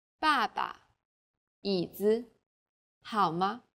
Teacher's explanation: there's a neutral tone this is very light weak and short